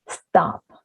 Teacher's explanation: and stop [t], this is unaspirated